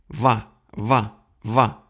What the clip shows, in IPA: va va va